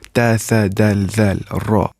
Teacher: These are al-huruf al-shamsiyah or solar letters. And these are pronounced with tip of tongue.